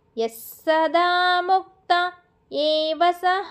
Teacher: స కి సకారము సంయుక్తాక్షరం కాబట్టి య తోనే స ని పట్టుకొని చదవాలి ఎస్సదా అని అక్కడ కొద్దిసేపు నాలుకని నిలబెడితే స కి స వత్తు పడిద్ది మనకి ఇక్కడ ఏ అనేది అచ్చు కాబట్టి మనం అక్కడ పాస్ ఇవ్వాలి ఎస్సదా